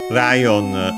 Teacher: Lion from English, of course, with the R in Japanese, since L isn't a sound. I'm pretty sure it's accented on the first one, so like in English, but let's check.